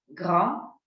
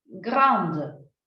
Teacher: yo voy a decir grand para el masculino, pero grande, de, hasta la D, para el femenino.